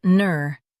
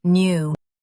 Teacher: US says neur. UK says new.